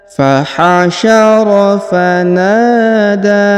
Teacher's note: huruf da dipanjangkan 2 harokat karena di atasnya terdapat tanda alif kecil dan di depannya terdapat alif bengkok atau alif maksurah.